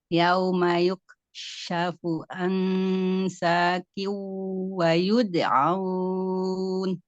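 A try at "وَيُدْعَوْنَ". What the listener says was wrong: Wa yud'aun. Itu A-nya harus terdengar. Wa yud'aun.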